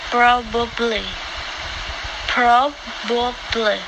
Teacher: this has three syllables even though a lot of people drop the middle one